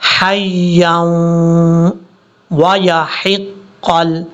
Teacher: یا کو جب واو سے ملائیں گے تو یہاں پہ ادغام یرملون کا غنہ ہوگا 2 سیکنڈ کے قریب · یہ ہا بریک ہے، ہا کو حَيًّا نہیں پڑھنا، بھاری ساؤنڈ کے ساتھ نہیں پڑھنا